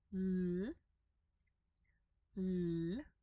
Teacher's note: the double R is that trilled R